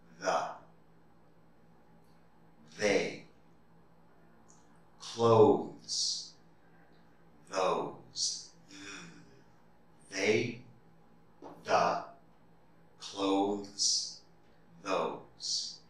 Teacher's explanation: you can feel the vibration in your throat when you make that th sound for voiced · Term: voiced th sounds